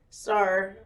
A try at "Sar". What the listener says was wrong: Sar? Sound like you said sir.